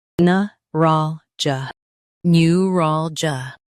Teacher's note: In US, stress ral. In UK, stress ral, but start with neu.